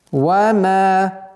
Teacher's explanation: Вот здесь нужно быть осторожным, так как звук мим и звук вау произносится посредством губные звуки, нужно договорить мим сукуном, а потом перейти в звук вау, чтобы не было ассимиляции.